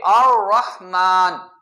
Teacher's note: را کو جو ہے وہ پور پڑھا جاتا ہے، موٹا پڑھا جاتا ہے زبر کی وجہ سے